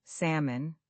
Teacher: The L disappears completely. It's just salmon.